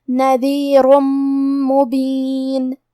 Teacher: پھر حرف المیم ہے کلمت مبین. میم حروف الادغام بغنہ میں سے ہے تو ہم یہ حکم کو غنہ اور تشدید کے ساتھ ادا کریں گے